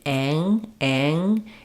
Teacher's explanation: because it gets a little bit nasalized the back of the tongue is Lifting for the NG · when we have the combination of a and NG Ang Ang it's going to sound a little less open than if I'm saying like hat or that